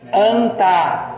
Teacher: esse N é no dente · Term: nasal dental